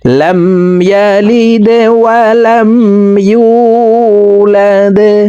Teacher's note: লাম মিম জবর লাম, ইয়া জবর ইয়া, লাম দাল জেরে লিদে, দাল কলকলার হরফ, নিচের দিকে ধাবিত করে ধাক্কা দিয়ে উচ্চারণ করব।